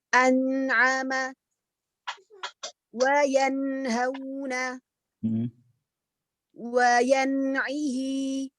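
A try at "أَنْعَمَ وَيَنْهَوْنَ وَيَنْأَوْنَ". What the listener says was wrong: Huruf nunnya ketika diucapkan jangan terlalu semangat mengucapkannya. Jadi maksud saya barusan tuh agak terlalu nekan ya.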